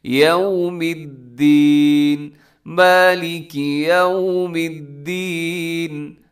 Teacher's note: مالک یوم الدین، یوم الدین کا خیال کرنا، یو غلط ہو جاتا ہے، تھوڑا سا اپنے ہونٹ گول کرنے ہیں واؤ پہ